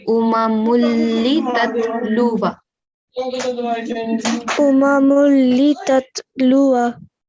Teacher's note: Okay, the tanween of Dhammatan into Lam Mushaddad. So we only take one Dhamma and then join it into Lam Mushaddad.